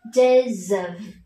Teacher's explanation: các con nối luôn cho cô với từ of thành days of